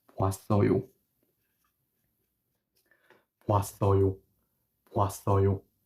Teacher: form a double vowel that no longer sounds like O, but now sounds like wa.